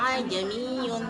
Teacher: Tashil yaitu hamzah kedua dibaca pertengahan antara alif dan hamzah